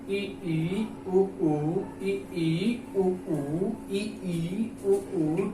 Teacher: समृत स्वर मतलब कि मुख बिल्कुल खुला ना रहे, मतलब कि मुख जो है बिल्कुल ना खुला रहे।